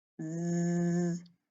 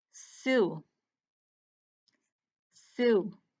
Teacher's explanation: Just like yesterday with f and v, one of these is voiced and one of those isn't. Z is voiced. It tickles, it vibrates. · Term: Z sound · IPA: /z/